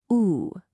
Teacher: For the blue moon sound, your lips get really tight and round, almost like you're going to whistle. Ooh, it's a very long, focused sound. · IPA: /uː/